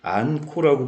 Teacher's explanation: 히읗과 기역이 결합이 돼서 키역 하나로 바뀌었으니까 축약이 일어났습니다